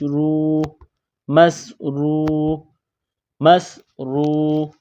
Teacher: واو کو پڑھتے وقت ہونٹوں کو گول کریں گے